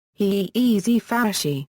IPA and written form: haː ʔɛs ˈfaʊ̯ (HSV)